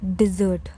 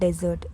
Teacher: The sweet dish turns into a soft Z. It's dessert.